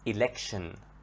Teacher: For example, elect, election. The T here is part of the word, and the T with I are pronounced as sh, election. Okay?